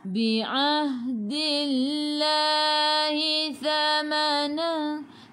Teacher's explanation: Dillah sebelum Allah, sebelum ke lafzul jalalah ada baris bawah, kena baca dengan nipis, tarqiq